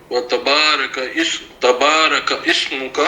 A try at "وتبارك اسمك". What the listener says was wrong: نہیں، وتبارک اسمک، کاف کی زبر کو ڈائریکٹ سین سے ملائیں گے. کسمک زبر ہے نا، وتبارک اسمک.